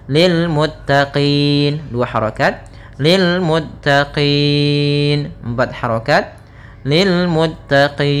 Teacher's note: Sebelum huruf nun yang disukunkan ada huruf mad, maka panjangnya kita boleh panjangkan 2 harokat, 4 harokat, ataupun 6 harokat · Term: mad arid